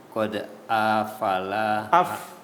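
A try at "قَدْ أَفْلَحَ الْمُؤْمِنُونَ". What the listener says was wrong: Kok fa-nya sukun aja. Qad aflahal.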